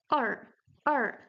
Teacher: The R sound in Chinese is retroflex. So you have to curve your tongue backwards when you pronounce it.